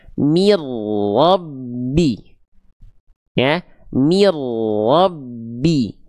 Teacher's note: ro bertasydid ya didahului oleh bunyi vokal i mi, maka akan dibaca mir tapi mir tetap tebal huruf r-nya